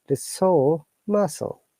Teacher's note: this r is not pronounced at all